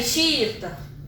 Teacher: O meu I do centro, ele continua sendo o mais forte, continua sendo isolado.